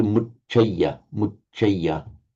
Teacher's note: Now, here, just remember, you want a W, mucheya, muche. So the A becomes short because it's followed by a double consonant